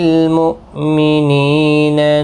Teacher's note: حمزہ ساکن کو جھٹکے کے ساتھ ادا کریں گے۔ نی یا مدہ ہے، ایک الف کی مقدار کے برابر کھینچ کر پڑھیں گے۔